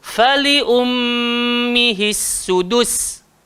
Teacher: Huruf sin kan? Sin sifat dia apa? Safir, berdesir.